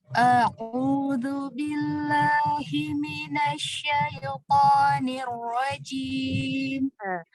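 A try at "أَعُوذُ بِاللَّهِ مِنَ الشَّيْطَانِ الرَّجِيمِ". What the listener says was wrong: Huruf ain, dhammahnya lebih disempurnakan lagi. A'udzu billah. Ya, jadi dia jangan terlalu dalam. Dia enggak terlalu dalam, dia hanya sedikit aja. A'udzu billah. Jangan a'u gitu. Enggak gitu.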